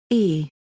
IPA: ɛ